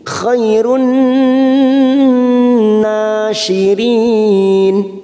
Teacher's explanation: Khairun kita tekan 3 ketuk nun yang bertasdid ini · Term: idgham samsiah